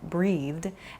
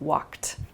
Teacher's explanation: An id sound, started, a soft D sound like breathed, and then a more hard T sound like walked